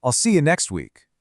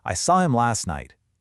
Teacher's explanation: Now, let's do it again, but faster. Let it flow and drop that T.